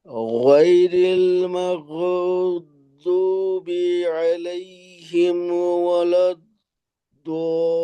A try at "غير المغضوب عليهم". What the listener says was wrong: জি, গয়নে আওয়াজটা ছুটলো, মাগ না, মাগ বু, গয়নের উচ্চারণ হলো নরম, আওয়াজ চালু রেখে মাগ বু, মাগ বু, এটাকে আমাদের শক্ত